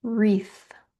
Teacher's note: Now, wreath is spelled with a W on the front, but the W is silent, so all you hear is the R on the front.